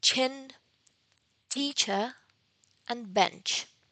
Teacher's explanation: the voiceless post-alveolar affricate